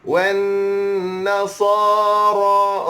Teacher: Wan nasara ra panjang 2 harakat, panjang 2 harakat